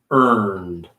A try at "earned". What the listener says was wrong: You're rolling into that N, which is a difficult to pronounce.